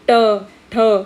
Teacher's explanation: तुमची जीभ बघा थोडी कर्व होऊन त्या ज्या पार्टला टच करते तो आहे मूर्धा भाग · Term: मूर्धन्य